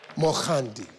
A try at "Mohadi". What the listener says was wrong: Perfect. Without the N. D-I. Mohadi. Mohadi.